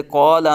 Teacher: حرف کو پر پڑھنا، جیسے قولا میں الف میں جو ہے وہ تفخیم پائی جا رہی ہے کہ الف سے پہلے قاف پر ہے تو الف کو بھی پر پڑھا جائے گا